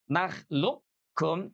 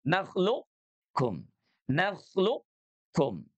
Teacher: Tidak naklukkum, tapi qof-nya dia menebal dulu · Huruf qafnya punya sifat isti'la, maka dia tidak lebur 100%, tidak nakhluqkum, tapi qafnya dia menebal dulu.